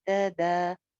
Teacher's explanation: दा एक अलिफ लंबा है जबकि ता जो है वो सिंगल है